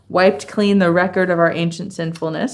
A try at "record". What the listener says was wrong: And so that one, it was the O sound in record. Yeah, and it sounds like you're actually making a U sound